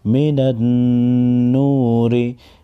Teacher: नून ज़बरना नून वाव पेश नू मिनन नूर ज़ेर मिनन नूरी मीम मुशद्दद और नून मुशद्दद दोनों को गुन्ना करके पढ़ेंगे।